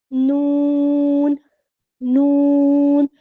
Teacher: جب آپ ان کی ادائیگی کریں گے نا تو آپ محسوس کریں گے آپ کی زبان جو ہے وہ اوپر اتنے دانتوں کو لگ رہی ہے، ان کی جڑوں کو یا ان کے مسوڑوں کو لگ رہی ہے